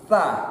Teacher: usahakan ada udara keluar sedikit. Fa, bukan sa, tapi Fa, dan lidah ada keluar juga sedikit.